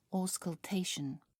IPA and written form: ˌɔːskəlˈteɪʃən (auscultation)